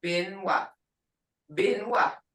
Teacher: Muskogee B is an unaspirated, saying without the puff of air that English speakers add at the beginning of a stressed syllable. It therefore sounds to English speakers as it's almost halfway through between a P and a B.